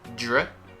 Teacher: it's a DR combination, which gives us a little j, dr. Then you go into o, draw, and then you go into drawer, drawer.